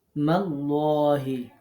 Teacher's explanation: আল্লাহ শব্দে লাম এখানে বোর হবে যেহেতু লামের আগে জবর